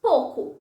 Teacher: Já numa fala mais espontânea e menos monitorada, o ditongo OU pode ser pronunciado como O. Ao invés de dizer pouco, dizemos pouco.